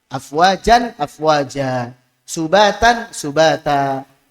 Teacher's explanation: Kita bahas kemarin ya saat pembahasan tanwin. Jadi saat fathatain dalam kondisi waqaf maka suara nun sukunnya diubah menjadi alif. Dipanjangkan 2 harokat namanya mad iwad.